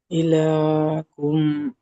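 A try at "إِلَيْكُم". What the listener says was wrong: ইলা নয়, লামিয়া সাবর লাই, এটি গিয়ালিন। ইয়ালিন নরম আওয়াজে তাড়াতাড়ি পড়তে হয়, লামিয়া সাবর লাই। ইলাইকুম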